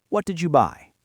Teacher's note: if I just want the information, I say, What did you buy? with a falling pitch.